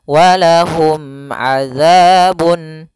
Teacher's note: Mim mati ketemu ain harus jelas yaitu izhar syafawi. Mimnya tidak boleh ditahan.